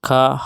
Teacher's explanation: اس کے بعد آتا ہے خا۔ خا کا مخرج خا حلق کے اوپر والے حصے سے ادا ہوتا ہے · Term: اقصی حلق